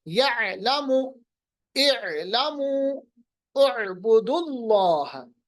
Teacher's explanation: जैसे यअलमु, या, ये यालमु नहीं पढ़ेंगे, वो अलग माने होगा, ये आइन से पढ़ना पड़ेगा। आइन का मखरज वसतुल हलक, दरमियानी हिस्सा, · आइन को हमें हमजा के साथ नहीं मिलाना, ये अलग अलग हरूफ है, इनको वसतुल हलक से अदा करना है। इसी तरह हा है, हा, ही, हु।